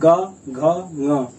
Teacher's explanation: ग घ ङ का जब उच्चारण करें, यहाँ पे देखिए गले में कंपन हो रहा है, इसलिए हम उसको क्या सघोष या फिर घोष वर्ड बोल दे रहे हैं।